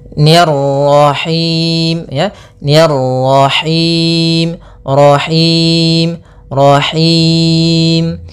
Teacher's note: kemudian ro-nya lagi tebal karena di sini ro tafkhim, yaitu ro yang berharakat tasydid